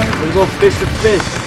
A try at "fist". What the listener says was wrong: You are going fish the fish. And it sounds like you're saying fish, not fist.